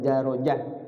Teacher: pengecualian Ta ini dibaca jadi ha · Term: tak marbut